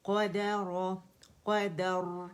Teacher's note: رو جو ہے روانی پہ بھی موٹا ہے اور ساکن پہ بھی موٹا ہو جائے گا، کیونکہ را ساکن سے پہلے ہمارے پاس فتح آ رہی ہے.